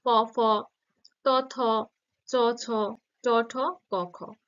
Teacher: যেগুলো উচ্চারণ করতে স্বরতন্ত্রের কম্পন হয় না এবং কণ্ঠস্বর গম্ভীর হয় না সেগুলো অঘোষ তো সেগুলোই আছে প ত থ চ ছ ট ঠ ক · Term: অঘোষ ধ্বনি